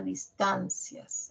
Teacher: Esta oración, por ser enunciativa, la característica que tiene en español es que la última palabra va a presentar un tono descendente, en cadencia, cae.